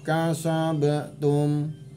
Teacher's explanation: huruf Qalqalah jadi dipantulkan dikit